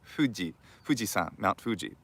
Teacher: which is a bilabial f